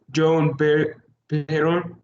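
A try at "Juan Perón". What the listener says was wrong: Yuan Piron. Once again, the yeah sound in here. It's not just sound, it's yeah sound. Yuan Piron. The policies of Yuan Piron.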